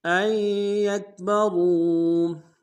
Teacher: وبدارا ان یکبروا، حمزہ کو یا کے سامنے لانا ہے، نون نہیں پڑھیں گے، یا کے اوپر تشدید زور دیں گے، را کو واو کے سامنے لانا ہے، واو مدہ ایک مقدار میں کھینچیں گے، را کو موٹا ادا کریں گے